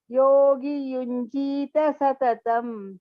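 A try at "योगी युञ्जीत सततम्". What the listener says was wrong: there not yogi yunjita satatam. Yogi dirgha. Yogi yunjita satatam.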